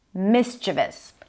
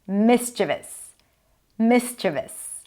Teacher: the stress is on the first syllable, mischievous.